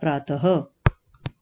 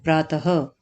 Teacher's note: तो प्रातः में यहाँ विसर्ग है, यानी कि हम कंठे का प्रयोग कर रहे हैं